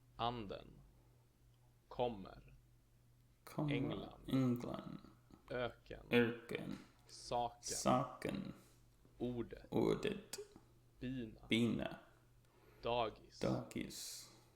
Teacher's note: In words with this accent, the pitch on the stressed syllable goes up and then down again in the unstressed syllable that follows. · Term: accent 1